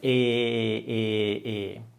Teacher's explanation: it's a long E. We don't have that sound in English either. It's an E where you have this forced smile